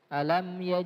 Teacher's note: huruf mim harus dibaca jelas tidak boleh disamarkan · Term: izhar syafawi